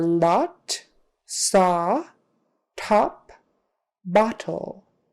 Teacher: Or the dentist tells you open your mouth and say ah. So your mouth comes open, it's tall, which has an ah sound. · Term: short O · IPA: /ɑ/